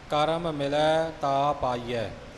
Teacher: ਦੋਹਾਂ ਮਮਿਆ ਨੂੰ ਨਿਖੇੜ ਕੇ ਪਾਠ